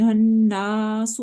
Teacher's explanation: सीन में whistling हो रही है चूंकि ये विस्लिंग लेटर्स में से एक है · नून मुशद्दद है, इसके ऊपर हम गुन्ना कर रहे हैं, हन्नासु, वन फिंगर स्ट्रेच कर रहे हैं चूंकि इसके आगे अलिफ मद्दा आ गया है।